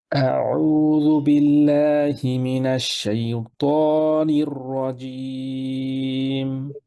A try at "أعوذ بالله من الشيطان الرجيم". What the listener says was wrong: এই তটা একটু খেয়াল করেন একটু পিছনের দিকে লাগান ত সেই ত